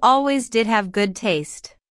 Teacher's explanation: notice the stress on did